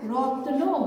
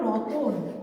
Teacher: কিন্তু পরিবর্তিত শব্দ রতনে, যেটাকে মৃদু করে বা লঘু করে বলা হয়েছে, সেখানে ত আর নয়ের মাঝে একটা স্বরবর্ণ এসছে। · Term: স্বরভক্তি